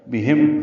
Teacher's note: ہا اقصی حلق سے ادا کریں گے، میم ساکن پہ اظہار شفوی ہے.